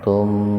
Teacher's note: Mim mati ketemu dengan mim, mim yang pertama diidghamkan, dimasukkan ke mim yang kedua dengan mendengung. Tahan 2 ketukan itu. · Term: idgham mimi